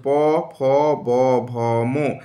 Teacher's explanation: দুটি ঠোঁট এক জায়গায় জড়ো হয়ে উচ্চারিত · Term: ওষ্ঠ বর্ণ